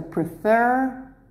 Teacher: the stress is on the end not at the beginning · So prefer, the stress is at the end.